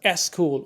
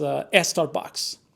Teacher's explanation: speakers uh tend to uh add a vowel sound like e to the beginning of the word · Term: prothesis